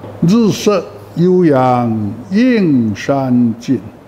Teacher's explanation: 映应当平声，山应当仄声。现在映和山两个字平仄对调，互相补救。